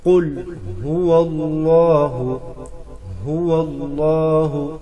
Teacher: ہا کو گلے کے اس حصے سے ادا کرے جو سینے کی طرف ہے. قل هو اللہ، اللہ کے لام سے پہلے زبر ہے، اللہ کا لام موٹا کر کے پڑھیں گے.